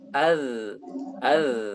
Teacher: huruf-huruf ini keluar dari ujung lidah dengan ujung gigi seri atas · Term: huruf lisawiyah